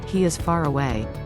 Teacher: in these dialects the word far has a silent r but the r is pronounced when saying he is far away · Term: linking r